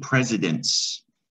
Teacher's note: interesting here that the s in presidents makes a z sound